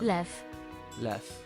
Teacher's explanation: the W switches to a F sound. And I guess when it's at the end, it's an F sound.